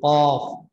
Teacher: वहां जो जुबान का जड़ है वो उससे लगे कौवे से, तो काफ अदा होता है